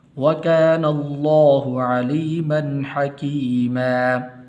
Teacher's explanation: غنہ نہیں کریں گے اس لیے کہ آگے حا حروف حلق میں سے